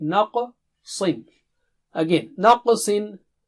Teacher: qaf is thick and high, and sad is very high